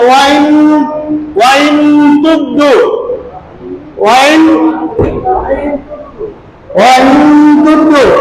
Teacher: অর্থাৎ বাতাসটা গোপন, নুনটা না উচ্চারণ করে আমরা গোপন করেছি, অর্থাৎ নাকের মধ্যে দিয়ে বের করে দিয়েছি। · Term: ইকফা